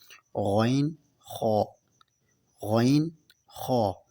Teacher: غین، خا حلق کے اوپر والے حصے سے ادا ہوتے ہیں